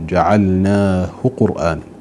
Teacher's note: الهاء الكناية هنا وقعت بعد ساكن، لذلك لا نصل هذه الهاء بواو، إنما نضمها من غير صلة